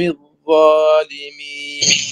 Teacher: أختي الذال وتزيد عليها بالاستعلاء والإطباق والتفخيم